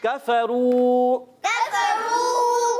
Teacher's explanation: بل الذین بل الذین کفروا کفروا کاف کو باریک رکھنا ہے، را کو پر رکھیں گے کیونکہ یہاں پر را پر پیش ہے ، اس وجہ سے را کو پر کر کے ادا کریں